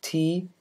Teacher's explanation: For T, there is a complete stoppage of air at the alveolar ridge. English speakers pronounce T at the beginning of a syllable as an alveolar stop.